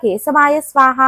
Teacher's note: కే శబ్దము గొంతు నుండి పుడుతుంది